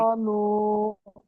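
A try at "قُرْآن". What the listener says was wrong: নুন টান দিচ্ছেন কেন? কুর আ নুন। কুর আ নুন। আচ্ছা, এখানে র- রর উপরে কি এসছে? রর উপরে কি এসছে? র। হ্যাঁ। তার তাহলে র সাকিনের আগে কি এসছে? পেশ এসছে, তাহলে এটা কি র পুর হবে না বারিক হবে? হ্যাঁ, এই কায়দাটা মনে রাখতে হবে।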